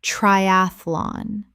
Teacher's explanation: 3 syllables in natural speech. The middle syllable collapses.